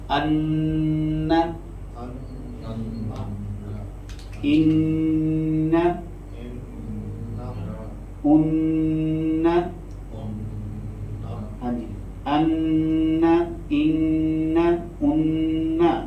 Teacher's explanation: نون مشدد اور میم مشدد، اس میں غنہ لازم ہوتا ہے. ان، یہ مکمل غنہ ہوتا ہے.